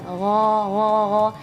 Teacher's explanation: melafalkannya seperti merasa ada ada buihbui gitu di sini ada getaran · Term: huruf gain